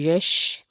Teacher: شین جو ہے وہ حرف شجریہ میں سے ہے اور یا بھی حرف شجریہ میں سے ہے دونوں، تو یہ جب دونوں ادا کریں گے تو آواز منہ میں پھیل لے گی